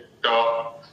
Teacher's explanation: जैसे हम ट बोलेंगे, ट, तो जिह्वा का जो अग्रभाग है एकदम 90 डिग्री पर खड़ा होकर के ऊपर स्पर्श करता है